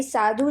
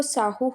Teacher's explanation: ਮਹਾਪ੍ਰਾਣ ਵਿਅੰਜਨ ਹਾਹੇ ਵਿੱਚ ਬਦਲ ਗਿਆ